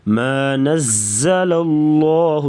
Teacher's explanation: زا کو سختی سے پڑھیں گے، شد آ گئی ہے